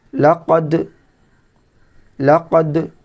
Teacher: دال میں قلقلہ کرنا ہے، دال قطب و جد میں سے، حروف قلقلہ میں سے ہے۔